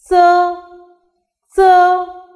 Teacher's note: the narrow Gap that is me with airflow s is pronounced the vocal cords do not vibrate while pronouncing s